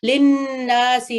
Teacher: ये कुतुब-ए-जात लेटर में से है। लिन्नासी, नून मुशद्दद है तो इसको गुन्ना का साउंड देना है